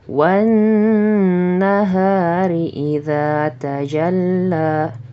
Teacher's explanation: cara membacanya kita harus sedikit menahan pada huruf yang terletak setelah alif lam tersebut · cara membacanya alif lam di sini kita tidak membacanya dengan jelas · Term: idgham syamsiyah